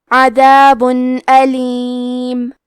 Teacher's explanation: اظہار کا معنی ہے ظاہر کرنا, اور کیونکہ تنوین کی اصلیت نون ساکن ہے تو ہم یہاں تنوین ظاہر کریں گے اور اسے نون ساکن پڑھیں گے اور بغیر غنہ سے یہ حکم کو ادا کریں گے